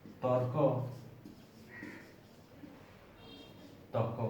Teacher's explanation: পদের মধ্যে র থাকে, সেটা লোপ পায় বা চলে যায় এবং পরবর্তী ব্যঞ্জন যেটা আছে সেটা দ্বিত্ব বা ডাবল হয়। এটার নাম হচ্ছে রকার লোপ।